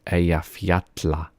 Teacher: When it is two L's in the middle of a word, it is tl, tl.